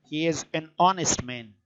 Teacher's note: the initial consonant H is not pronounced